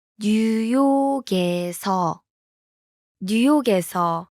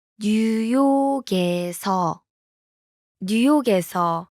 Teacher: The last consonant in 뉴욕, blends with the vowel in. 에서.